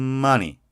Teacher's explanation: M 소리를 내려면 어떻게 된다? 닫고 콧소리. money. M이 길죠.